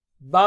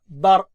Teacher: با باریک را موٹا